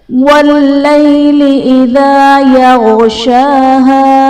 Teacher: شین پر کھڑا زبر ہے جو کہ الف مدہ کے قائم مقام ہے، اس لیے ہم اسے ایک الف یعنی دو حرکات کے برابر کھینچ کر پڑھیں گے